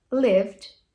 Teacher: o ED vai ter som de D purinho